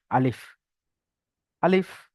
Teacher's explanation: মুখের খালি অংশতে উচ্চারণ হয় আলিফ।